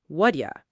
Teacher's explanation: All four words squeezed together into practically one sound.